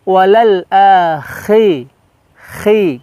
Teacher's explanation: huruf kha di situ terkesan dia kasar di tenggorokan kita